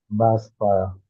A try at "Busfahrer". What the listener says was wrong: Why are you saying it in English? Why are you saying boss fire in English? Why are you saying boss in English?